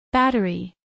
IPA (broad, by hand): ˈbætəri